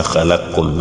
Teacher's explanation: dans la version de l'imam As-Susi, une autre version coranique, vous allez voir qu'arriver ici, même si Qafun a fatha, on va appliquer le grand idgham en disant khalaqkum. Mais dans la version de Hafsun, pour faire ce idgham en disant khalaqkum, il faut que Qafun ait le soukoun.